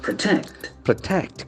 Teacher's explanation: For verb form, the syllable gets accent in the second part.